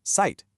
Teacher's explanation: The German Z has this sharp ts sound, so Zeit, the word for time, is pronounced Zeit.